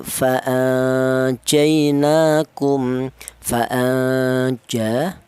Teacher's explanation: nun yang mati. Di mana nun mati ini berjumpa dengan huruf jim. Ini dibaca ikhfa ya.